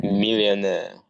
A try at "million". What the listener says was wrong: Oh, yeah, that's better. So miss out the air bit then. So just million, million.